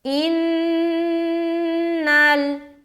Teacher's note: نون مشدد کا غنہ کیا، اس کے بعد نون کو لام سے ملا دیا